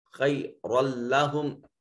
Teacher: لکانہ میں الف خالی از حرکت ما قبل مفتوح، خیر لہم را کے اوپر تنوین اور اس کے بعد حروف یرملون میں سے لام، ادغام بغیر غنہ کے ہوگا